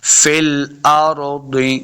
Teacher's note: دواد کے نیچے زیر ہے اور دواد حروف مستعلیہ سے اس کو موٹا پڑھنا ہے، فی الارض۔ بعض لوگ یہاں پہ یہ بڑی غلطی کرتے ہیں، فی الارض دے پڑھ دیتے ہیں، تو یہ غلطی ہے، فی الارض اصل میں ہے فی الارض۔